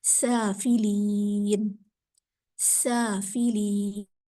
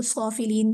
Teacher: سافلین، سافلین آپ میں سے کچھ اس کو صافلین صاد کے مخرج کے ساتھ بھی پڑھنے کی کوشش کر رہے ہوں گے، تو یہ صاد نہیں ہے، یہ سین ہے، سیٹی والا حرف